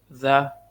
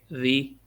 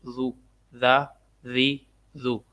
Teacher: ذال کو نرمی سے پڑھیں گے تاکہ یہ ذا اور دال کا فرق رہے